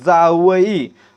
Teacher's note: या ठिकाणी पहा जावई अ जोडला किंवा जनाबाई या ठिकाणी देखील अ जोडल्यासारखा ज चा उच्चार होतोय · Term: दंत तालव्य